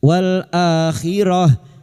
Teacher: tak marbutah yang dibaca waqaf kita baca sukun akhirah